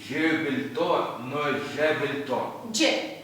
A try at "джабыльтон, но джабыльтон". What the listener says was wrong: Джабыльтон, но джабыльтон. Немножко длиннее должен звучать.